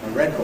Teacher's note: We still say /ɔː/ in that unstressed syllable, ‘a record’ /ˈrekɔːd/.